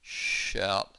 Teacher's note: The vibration is turned on, and the ow bit is voiced.